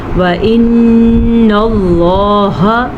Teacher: وَإِنَّ اللَّهَ نون کا غنہ ادا کر لیجیے گا، نون پیشاد ہے اس لیے، اور لفظ اللہ کو پر پڑھنا ہے لفظ اللہ سے پیچھے زبر کی وجہ سے